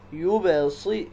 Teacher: یبصرون، با یہ حروف قلقلہ میں سے ہے تو یہاں ہم قلقلہ کریں گے، یبصرون، یوب، اور را کے اوپر پیش ہے تو را کو ہم پر پڑھیں گے